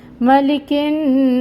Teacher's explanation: سین کو ہم نے یہاں پہ وقف کرنا ہے، تو سین کی زیر ختم ہو جائے گی اور یہاں پہ کیا آئے گی، ہمس کی آواز اینڈ پہ آئے گی